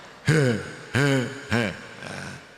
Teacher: Ha ini harus dari tenggorokan paling bawah.